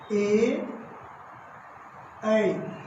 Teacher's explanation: ए ऐ का उच्चारण कंठ तालु से होता है